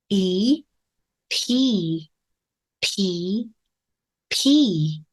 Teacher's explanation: 알파벳입니다 익숙한 소리 중에 하나죠 윗입술 아랫입술을 가볍게 붙였다 뗄 텐데요 알파벳 B 만드는 것과 동일한 환경 하지만 성대의 울림을 넣지 않습니다